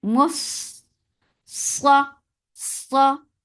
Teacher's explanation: Keep Mim light but Sad heavy. And as you will touch Sad, your lips should be in a straight position.